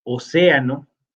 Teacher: Mientras que océano o no, sí se acentúa porque es una palabra esdrújula. Tiene el acento en la antepenúltima sílaba y por lo tanto, según la regla anterior, todas las esdrújulas se tildarían.